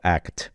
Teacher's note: And notice how his T here, can you see how as opposed to those other T's that we're just showing down here, act, it's taken up this full section way up to the top, act, it's just it's a really full T sound rather than just a dental sound